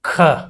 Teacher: महाप्राण में अतिरिक्त वायु के कारण ह की अतिरिक्त ध्वनि सुनाई पड़ती है।